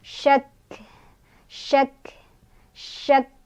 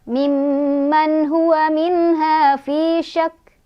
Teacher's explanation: Ya, jadi ada nya, belakangnya ada anginnya ya. Tapi hati-hati, nya bukan yang dari tenggorokan bawah, bukan H. Ini tuh dari efek melepaskan si kafnya gitu ya. · Jadi cara berhentinya kafnya disukunkan, kemudian ditahan dulu karena ada tasydid, lalu baru dikeluarkan sifat hurufnya. Sifat huruf dari kaf ini adalah dia lebih terlihat hamsnya ketika sukun tuh ya, ada aliran angin. Jadi dikeluarkan anginnya.